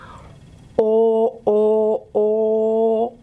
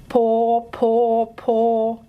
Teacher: you need to pull your tongue back, but it's not going upwards. It's sort of going back towards the uvular region here.